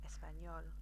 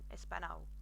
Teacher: just imagine that you've got the N and a y, a Y sound afterwards. So Español, and that will help you remember to pronounce it Español rather than Espanol, which sounds awful, which you probably understand.